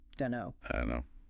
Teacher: That T and don't usually gone. And the vowel sounds in both words get shorter, less distinct.